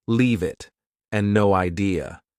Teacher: Both sound like they have no spaces between the words.